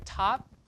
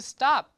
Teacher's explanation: T in top, T, this T in top, is pronounced like this in reality, T with an H, meaning with aspiration. Remember, aspiration is the puff of air that we have, okay?